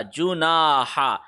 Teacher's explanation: نا کو بھی 1 سیکنڈ لمبا کریں گے کیونکہ نون کے اوپر زبر آ رہا ہے, آگے الف آ رہا ہے, تو نا 1 سیکنڈ لمبا کیا.